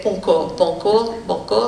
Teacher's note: Donc ça va être pancor, pancor, pancor, c'est ni on, ni en, c'est pas le en, ni le on français, c'est quelque chose entre les deux